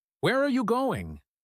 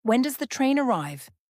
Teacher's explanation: with a wh question where are you going the intonation usually Falls at the end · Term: falling tone